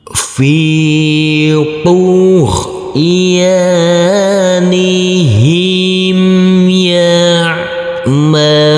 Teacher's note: Huruf H kita baca panjang dengan panjang 2 harokat, karena huruf H ini huruf H yang berdhammah U bertemu dengan huruf wawu sukun